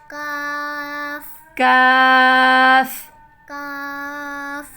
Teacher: زبان کی جڑ کو سخت تالو سے لگا کر ادا ہوتا ہے.